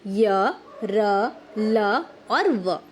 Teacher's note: जिन व्यंजनों के उच्चारण में वायु मुख के अंदर ही रह जाती है उन्हें हम अंतस्थ व्यंजन कहते हैं